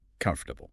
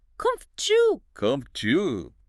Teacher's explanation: What happens is that internal O sound, the one after the F, it just vanishes.